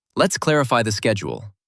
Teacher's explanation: Notice the calm fall at the end.